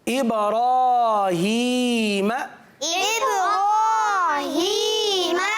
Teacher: पुर पढ़ना चाहिए, क्योंकि रा पर जब खड़ा ज़बर हो तो रा को पुर पढ़ते हैं